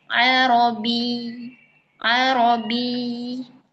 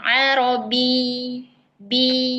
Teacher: ditekan karena ada tasdid gitu. Tapi pendek tapi pendek. Jangan sampai panjang.